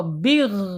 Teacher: ketika dia sukun gain ini enggak boleh mantul ya